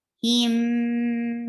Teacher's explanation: you are giving gunna, clear gunna, and this is the longer gunna. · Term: idgham shafawi